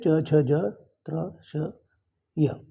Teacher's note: जीभ ताळूला लागू राहिली म्हणून तालव्य वर्ण म्हणतात